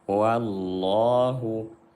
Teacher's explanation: Wa-nya nipis ya. Wa nipis, lam jalalah yang tebal.